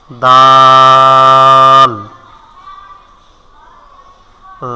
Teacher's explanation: জিহ্বার আগা সামনের উপরের দাঁতের গড়ার সঙ্গে লাগাইয়া